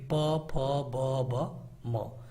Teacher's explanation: जिनको बोलने के लिए दोनों होठों का प्रयोग करना पड़े इनको हम कहते हैं ओष्ठ